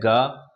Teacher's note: बाद आता है ग यह एक उष्म ी व्यंजन है और इसका उच्चारण स्थान है कंठ प्लस जीवा मूल्य और यह सघोष अल्प प्राण है